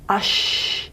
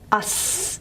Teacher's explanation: the airflow channel is a bit wider for this sound than for this sound, for sh than for s. So the channel on the tongue is a bit of a wider groove.